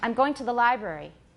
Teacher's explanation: so we often have a schwa rather than a full vowel